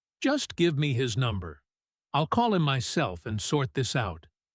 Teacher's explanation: I'll call him myself and sort this out." She says it quickly, confidently, maybe a little too confidently. The stress landing hard and fast on myself.